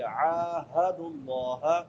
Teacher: ہے، حمزہ پڑھتے ہیں، حمزہ اور عین میں فرق کرنا ہے، عین کہاں سے ادا ہوتی ہے؟ وسط حلق سے، حلق کے درمیان سے